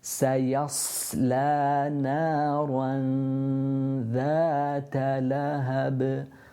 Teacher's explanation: So you can see that my tongue, the tip of the tongue is underneath the central incisors and ready for the dhal, and that's where it's resting.